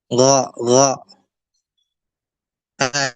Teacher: Adapun ghain, maka tidak ada sifat hamasnya. Dia tertahan, jahar.